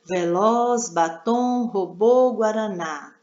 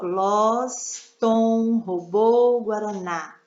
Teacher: Veloz, batom, robô, guaraná. Todas, a última sílaba é a sílaba forte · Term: oxítonas